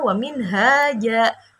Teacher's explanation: jadi bacanya seperti fathah biasa dan panjangnya seperti panjang mat tabi'i. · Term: mat iwat